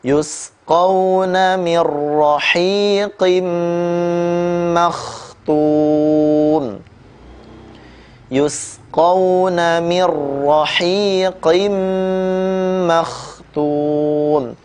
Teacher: Nun sukun bertemu huruf ra, dibaca dengan tanpa gunnah.